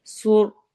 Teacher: صوت کو موٹا پڑھنا ہے، رو کو بھی موٹا پڑھنا ہے